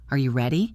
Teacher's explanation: Make your voice go up on ready. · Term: rising intonation